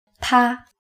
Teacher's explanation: The pinyin is TA and it's the first tone. The first tone starts and stays very high.